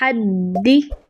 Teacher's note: دال مشدد ہے تو جب ہمارے پاس قاف تو با جیم دال یہ مشدد ہوتے ہیں تو ان پر جماؤ کا قاعدہ لگتا ہے، یعنی ہم 1 سیکنڈ کا پاز دے کر پھر ادا کرتے ہیں